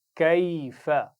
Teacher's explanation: کاف کو موٹا نہیں پڑھنا